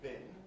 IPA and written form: bɪn (bin)